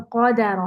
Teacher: ق मोटा और रॉ मोटा, तो दाल बारीक